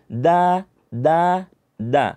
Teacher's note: da itu keluarnya dari ujung lidah ya bertemu dengan pangkal gigi seri jadi ditempelkan